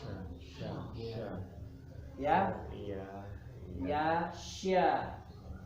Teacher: Suaranya berasal dari tengah lidah yang menyentuh langit.